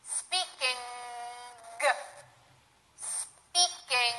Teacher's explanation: And you then have to force out the G sound. You say the N sound very quickly, and then you force out the G sound from the back of your throat.